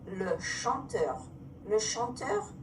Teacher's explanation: CH in French makes an SH sound. We do not have CH. So instead of ch, it's going to be sh.